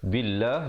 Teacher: lafzul jalalah dibaca dengan nipis, dua harakat